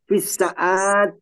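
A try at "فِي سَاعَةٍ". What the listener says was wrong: Jangan, ainnya jangan panjang ainnya. ainnya yang jadi panjang gitu.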